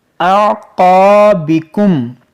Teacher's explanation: حمزہ عین زبر علی اعقا، یہ قاف حروف مشتعلیہ ہے، اس کو موٹا کریں گے، اور یہ الف مدہ ہے، اس کو کھینچیں گے۔ اعقابکم، اور پھر میم ساکن کے بعد دیکھیں فا ہے، یہاں پر اظہار شفوی کریں گے، یعنی غنہ یہاں نہیں کریں گے۔